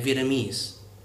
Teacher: So like in English, our country's name is actually pronounced Vietnam, and the language, which I believe a lot of people mispronounce, is called Vietnamese with a stress on the last syllable. So again, Vietnam and Vietnamese.